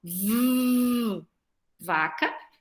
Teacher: O V vai ser som de V, é a boquinha igual a do F, só que com raio, porque eu tenho aqui uma consoante sonora